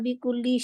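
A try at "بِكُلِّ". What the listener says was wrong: बिकुल्ली सख्ती से है ना। बिकुल्ली हम्म, हम्म, तशदीद के लिए पूरा टाइम देते हैं।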